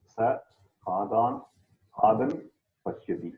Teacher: Yes. The Visarga will get dropped.